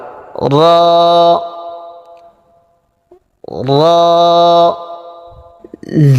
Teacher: জিহ্বার আগার পিঠ উপরের তালুতে লাগবে, মোটা আওয়াজ হবে, এক আলিফ পরিমাণ টান হবে।